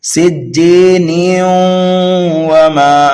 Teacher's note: تنوین کے بعد واو حروف یرملون میں سے آنے کی وجہ سے ادغام ہوگا